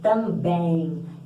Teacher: Então é como se tivesse um I embutido aí depois do E. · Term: ditongo nasal